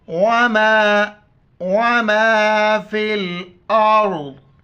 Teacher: را سے پہلے الف کے اوپر زبر ہے، را کو موٹا پڑھیں گے